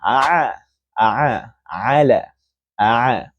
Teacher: huruf ain keluar daripada kerongkong tengah